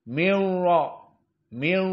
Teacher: ro dalam keadaan musyaddadah karena dia masuk idgham Nun bertemu dengan ro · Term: ro musyaddadah